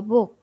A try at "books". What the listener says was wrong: Nhớ âm k đằng sau nhé. S nữa, books.